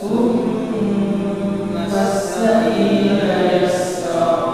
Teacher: Thumma ini juga ditahan karena dia ada tasdidnya di situ, mim tasdidnya.